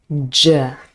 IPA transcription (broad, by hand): dʒ